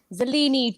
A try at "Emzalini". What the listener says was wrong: Don't forget the M. M Zalini.